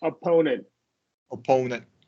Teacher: technically NT we we like to use a stop T yeah opponent opponent yeah correct uh and it should be marked